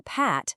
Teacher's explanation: To make both of these sounds, you press your lips together to completely stop the air. But for the P in Pat, there's no vibration. It's just air.